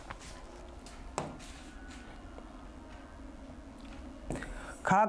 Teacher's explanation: ख का उच्चारण स्थान है कंठ